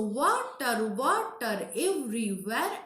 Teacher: So when first syllable is stressed and the next syllable is unstressed, this is called trochaic, and the opposite is iambic. So here in the word water, the wa is here stressed, the first syllable, and tar is unstressed